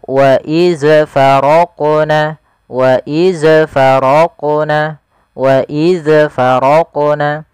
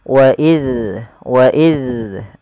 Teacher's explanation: melafalkan huruf zal yang dia berharakat sukun. Jangan sampai ia terpantulkan. Yang pertama kesalahan terjadi mantul, itu salah.